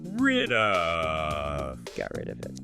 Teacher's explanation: the D sound isn't separate. It effectively becomes the start of the sound for of in the flow. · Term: Consonant vowel linking